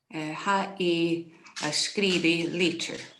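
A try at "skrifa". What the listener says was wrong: Skrivig lichtjer. And make sure you say skrivig. When you said skrivi, then that can take it into the future tense. With an I at the end. So skrivig, your ADH, the ug sound.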